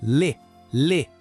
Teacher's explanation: É quase como se a vogal nem quisesse aparecer direito.